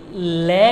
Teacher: लय जब बोलोगे दांतों पे जीभ टच नहीं करती है, ऊपर टच करती है। जीभ मुख के ऊपरी भाग पर टच करेगी और जीभ के दोनों साइड से हवा बाहर निकलती है। जीभ के दोनों साइड से, लेफ्ट राइट, जीभ के लेफ्ट राइट से हवा बाहर निकलती है। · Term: पार्श्विक व्यंजन